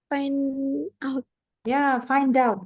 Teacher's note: find out gitu ini juga konsonan ketemu vowel sambung